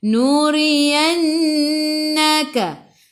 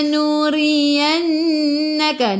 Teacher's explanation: Ri baris bawah kena baca dengan senyum, baca dengan nipis. Ra-nya baris bawah tarqiq.